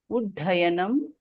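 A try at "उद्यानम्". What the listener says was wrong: There is no Mahaprana.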